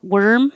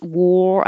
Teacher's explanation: worm, my jaw is more closed. War, I have to open more to make room for the O